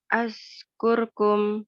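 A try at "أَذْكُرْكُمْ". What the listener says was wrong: Nah, tebalkan ro kur. Ya, azkurkum.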